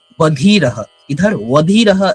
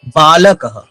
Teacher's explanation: ये गलत है। बालक ये कंप्लीटली ब होगा मतलब स्पर्श होगा दो होठ में तब वो सही से उच्चारित होता है।